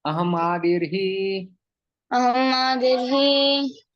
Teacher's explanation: यहाँ पर संधि हो जाता है, विसर्ग रेफ में परिवर्तित हो जाता है।